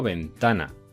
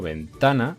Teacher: Yo digo ventana y como digo ventana, ta es la sílaba tónica, está en penúltimo lugar.